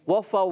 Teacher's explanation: क्योंकि वाव के बाद आ गया अलिफ, तो होंठ तो खुल जाएंगे